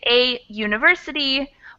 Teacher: the way we pronounce it is kind of like a Y, like ya, instead of the actual vowel sound of oo